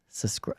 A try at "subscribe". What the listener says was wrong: There's a B in there, man. I heard you say it 42 times today, and I'm like, there's no way you're saying subscribe.